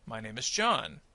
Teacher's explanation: So notice that John receives more of that rising action and then falls at the end because it's the end of the sentence